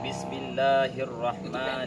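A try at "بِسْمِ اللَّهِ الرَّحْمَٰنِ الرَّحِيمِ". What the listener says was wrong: Masih pendek, panjang.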